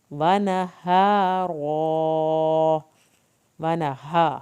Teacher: हा अंदर से निकालना है, ये हल्क वाला हा नहीं है। हा रा को पुर करके पढ़ना है।